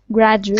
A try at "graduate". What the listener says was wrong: Yeah, I think you're adding a little E in there, like a gradu EU, but it's no EU.